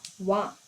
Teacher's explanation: ಓಷ್ಟ್ಯ ಅಂತ ಅಂದ್ರೆ ತುಟಿ. ಹಲ್ಲು ಮತ್ತು ತುಟಿ ಈ ಎರಡರ ಸಹಾಯದಿಂದ ಉಚ್ಚಾರಣೆಯಾಗುವ ಅಕ್ಷರವನ್ನ ನಾವು ದಂತೋಷ್ಟ್ಯಾಕ್ಷರಗಳು ಅಂತ ಕರಿತೀವಿ. ಯಾವುವು ಅಂತ ನೋಡೋದಾದ್ರೆ ಕೇವಲ ಒಂದೇ ಒಂದು ದಂತೋಷ್ಟ್ಯಾಕ್ಷರವನ್ನ ನಾವು ನೋಡ್ಬೋದು.